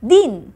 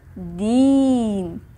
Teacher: पण जर याला आपण दीर्घ ई असं जोडलं तर याचा उच्चार होतो दीन.